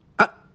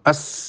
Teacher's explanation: kalau orang mengucapkan a suara madek tapi kalau as suara mengalir